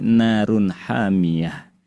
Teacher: Maka dengan merujuk pada teori iqlab pada kata narun hamiatun ketika disambung maka berlakulah hukum iqlab. Ketika waqaf dibaca narun hamiah diganti hurufnya jadi huruf ha yang sukun. Sedangkan ketika disambung berubah tajwidnya yang asalnya ha sukun.